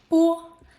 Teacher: Vowel o. Round your lips like you are saying oh. Slightly deeper than the English o.